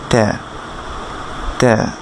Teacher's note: আপনার জিহ্বার আগা উপরের দাঁতের গোড়ার সাথে লেগে উচ্চারণ হবে ত্যা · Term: গোলতা